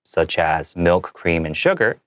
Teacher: I made my intonation a little lower so that it doesn't bring away from the sentence and confuse the listener but allows them to know that I'm just giving a little